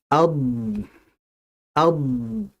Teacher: Jadi artinya istitalah yang tadi bermakna memanjang atau melebar maksudnya adalah dalam pengucapan huruf dhad itu kan makhrajnya di tepi lidah. dia memanjang dan melebar sampai masuk ke dalam makhrajnya huruf lam. Maka dia disebut dengan istitalah.